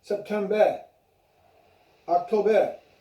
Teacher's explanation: So just remember, in the months, the R's are left out at the end of those months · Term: the R is silent